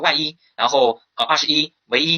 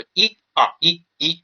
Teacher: 在末尾的时候，单念的时候，比如1、2、1，就是这个1，它也是不变读阴平